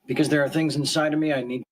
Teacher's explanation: so he doesn't say inside of me, but of is reduced to a schwa sound, and he goes inside of me, inside of me, inside of me, inside of me, not inside of me. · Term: Connected speech